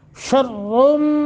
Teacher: रा को मोटा भी करेंगे क्योंकि रा के ऊपर दो तनवीन यानी जमा